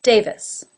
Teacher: That has the A as in say, Davis, with a schwa in the second syllable.